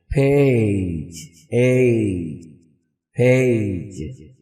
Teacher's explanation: تو اگر میں اس کو اکیلے کو بولوں تو میں بولوں گا اے اے، ہم اے بولتے ہیں، اصل میں اے نہیں ہے، جو اس کی ایکچوئل ساؤنڈ ہے وہ ہے اے، یعنی پہلے اے پھر ای، دونوں کو ملا لیں تو بنتا ہے اے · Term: ڈفتھونگ